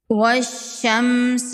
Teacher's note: یہاں پر دیکھیں، یہاں پر حروف شمسی ہے۔ واو کو ڈائریکٹ شین کے ساتھ ملائیں گے، الف اور لام کو نہیں پڑھیں گے